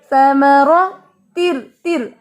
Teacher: را کے اوپر زبر ہے یعنی فتحہ ہے تو ہم اس کو موٹا کریں گے